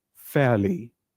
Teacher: R is silent we don't pronounce R